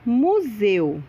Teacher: Se você falou que E é vogal e U semivogal, acertou. O E é pronunciado com mais intensidade e o U quase não aparece.